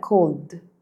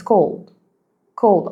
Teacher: At the end, the D is spoken very fast that I barely hear it. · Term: Silent D